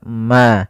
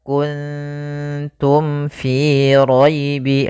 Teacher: Izhar itu jelas, syafawi itu berkaitan dengan syafah kita, dengan bibir kita. Maka mim mati itu kan makhrajnya daripada bibir kita, maka mim itu kan rapat